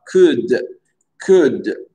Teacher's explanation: le L, il ne se prononce pas.